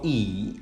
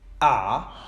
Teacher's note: the vowel a are both front vowels in english why because in their production the tongue is pushed to the front part of the mouth